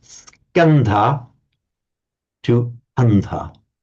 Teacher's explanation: The consonant cluster, the sk, has broken down now in Pali into a single consonant, but because of the presence of the S, that's the loss of the S is kind of compensated for by aspirating the consonant